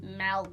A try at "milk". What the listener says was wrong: It's milk. Not milk. There is no E in milk. I don't know where anyone's getting milk.